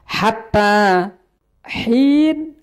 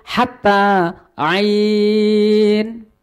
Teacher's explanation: Hatta hin pakai ha, hatta hin. Nah, antara ha dengan ain itu makhrajnya sama-sama makhrajnya wasatul halqi, yaitu tengah tenggorokan.